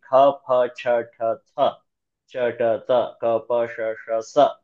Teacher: ವಿವಾರಹ ಶ್ವಾಸ ಅಘೋಷ ವಿವಾರ ಶ್ವಾಸ ಅಘೋಷ ಈ ಮೂರು ಸೇರಿ ಬಾಹ್ಯ ಪ್ರಯತ್ನ ಸ್ವಲ್ಪ ಓಪನ್ ಅಪ್ ಆಗಿ ಜಾಸ್ತಿ ಬ್ರೆತ್ ಅನ್ನ ಉಪಯೋಗಿಸಿ ಸ್ವಲ್ಪ ಸಾಫ್ಟ್ ಸೌಂಡ್ ಇಂದ ಹೇಳುವಂತಹ ಅಕ್ಷರಗಳು ಇವು